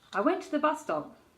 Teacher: So you just say that S once and then move on to the T. Bus stop becomes one word.